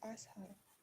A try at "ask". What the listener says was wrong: Ask. Ask. There should be K sound. Ka. Ask. Ask. Create the K sound. Ka. Ask. Ka. Ask. Ka. Ka. Ask. You have to pronounce the K sound. Not ask only. Ask. There is a K sound. Ka. You know the crow? The crow always cows. Says ka. Ka like this. So remember this ka sound should be there and ask.